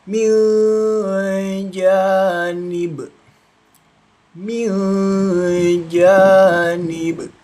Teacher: Nun mati bertemu huruf jim termasuk hukum bacaan ikfa samarkan membunyinya lalu didengungkan ya dua ketukan atau dua harakat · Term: ikhfa